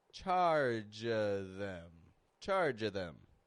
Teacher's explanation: we're dropping the V sound